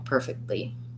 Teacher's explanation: it's more fluent to do the stop t and release right into the l perfectly thank you for that request okay um we have a